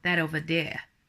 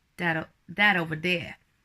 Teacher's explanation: So your T's are more like a D.